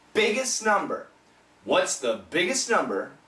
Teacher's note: the S is a strong sound, and so is the N. It cancels the T. There's no T.